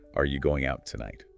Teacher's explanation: The T in out is often silent but might link with the T in tonight if there's no pause.